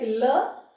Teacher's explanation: Sides are open and somewhere there is a closure in the middle, and the air passes through both the sides of the mouth cavity. So it is known as the lateral.